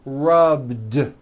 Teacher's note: It's not rubbed with an unvoiced T. It's rubbed, like that.